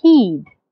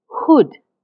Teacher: the ha in heed my lips are slightly spread but the ha in hood my lips are slightly rounded say them yourself and you will feel the difference you can